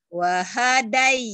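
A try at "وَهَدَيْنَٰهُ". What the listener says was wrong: Salah, hanya pendek. Wahadai, wahadai.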